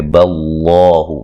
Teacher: با کو باریک لفظ اللہ کو موٹا ادا کریں گے